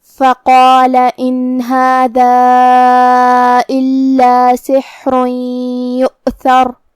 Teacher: قاف کی ادائیگی زبان کے جڑ اور تالو کے نرم حصے سے ہے. قاف حروف تفخیم میں سے بھی ہے تو ہم یہ حرف کو بھاری آواز میں پڑھیں گے.